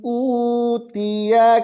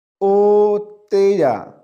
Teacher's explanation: دوبارہ دیکھیں, اس کو اس طرح نہیں پڑھیں گے او تیجا, یہ او نہیں ہے اور تا زیر تی ہوتا ہے, تے نہیں ہوتا, مجہول کر کے نہیں پڑھیں گے